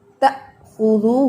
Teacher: ذرا بھی تا کی زبر کو لمبا نہیں ہونے دینا، تا ایسے نہیں پڑھنا، تأخذہ.